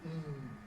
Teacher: tongue tip on alveolar ridge, complete closure, soft palate down, vocal cords vibrating, air streaming out through the nose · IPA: [n]